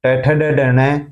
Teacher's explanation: मूर्धन्य, जीभ मुर्दा को स्पर्श करती है